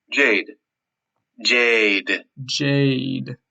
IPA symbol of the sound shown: eɪ